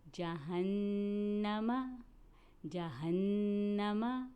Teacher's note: نون مشدد اسے غنے سے ادا کریں گے